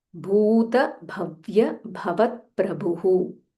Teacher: Bha Mahaprana, and it is Bhu Dirgha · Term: Mahaprana Bha